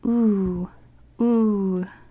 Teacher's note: same sound ooh as in umami but low tone